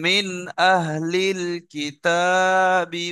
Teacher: In ঠিক আছে, তাহলে এখানে আমরা জানলাম এখানে গুণনা হবে না, নুন সাকিনের পরে হামজা এসছে, বিনা গুণনায় জাহির করে পড়তে হবে